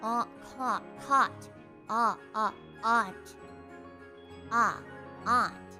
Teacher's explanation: I have the same vowel in caught, and aunt.